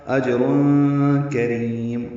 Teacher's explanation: اجرن میں جیم ساکن پہ قلقلہ ہے · تنوین کے بعد کاف آنے کی وجہ سے اخفا ہوگا ، اجرن کریم، کاف را باریک ہیں، را کو لمبا کریں